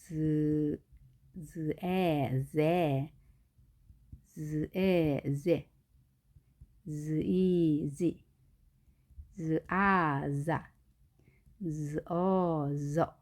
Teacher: 그 다음 마지막으로 z 발음은 자 지읒으로 표시하지만 자 치아 뒤에 부분에서 혀가 닿으면서 떨림이 있는 소리